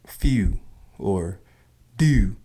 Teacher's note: the stress of the U sound in many words is a telltale sign of a Baltimorean, as in few or do.